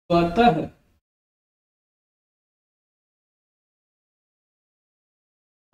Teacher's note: विसर्ग का उच्चारण ह की तरह होता है